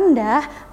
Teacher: bunyi vokal e dalam kata rendah merupakan contoh vokal Tengah karena gerakan lidah bagian tengahnya berada sedikit lebih rendah